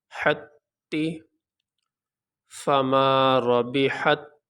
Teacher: اب یہاں جب پڑھیں گے تو ایک تا پڑھیں گے، یہ دو تا نہیں پڑھیں گے۔ اس تا کو اس تا میں داخل کر دیا گیا، تو اب یہاں پہ پڑھتے ہوئے ایک ہی تا کو ظاہر کریں گے۔ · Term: تشدید